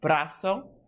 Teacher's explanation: You've got that spoken accent on the second to last syllable.